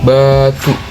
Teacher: Huruf B, pengucapan bibir rapat keluar suara saat terbuka.